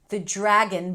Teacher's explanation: The dragon, it's a little hack here. The DR is pronounced as a J.